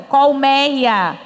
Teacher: A palavra, acreditem, era colmeia, porque tinha o acento. Agora sim, a gente usa bem aberto, colmeia, porque não tem mais acento.